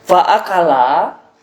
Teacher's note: la dibaca panjang 2 harakat, hukumnya adalah mad tabi'i